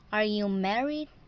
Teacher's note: from normal tone it will rise and it will not shut down it will remain Rising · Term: rising intonation